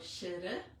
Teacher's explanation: It's actually not a rolling of the tongue, but just a touch of the tongue into a little divot that's about 1 centimeter away from our front teeth, up in our palate. So it's just a little dab of the tongue there. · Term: Sanskrit R